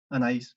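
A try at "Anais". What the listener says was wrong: no, sin acento, Anaís sin acento.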